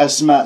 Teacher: سين ساكنة صفير وتتجلى فيها الهمس والرخاء، والهمس جريان نفس، الرخاء وجريان الصوت